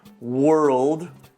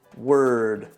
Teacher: I frequently hear the word world mispronounced as word. Don't forget that dark L in there.